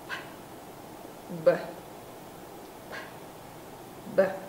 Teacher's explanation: Cả hai đều bậm môi, bật hơi. Không bật hơi, b. Cổ rung.